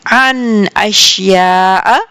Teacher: عن یہ نون میں پورا پڑھوں گی، گنہ نہیں کروں گی. عن بیکاز آگے دیکھیے نون ساکنہ کے بعد حمزہ ہے، ٹھیک ہے.